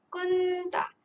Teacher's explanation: Dengungnya adalah samar-samar. Jadi ianya adalah ikhfa hakiki. Nun mati bertemu dengan ta.